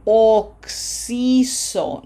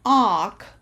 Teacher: No open O. This has to be closed. Oxiso. Two C's.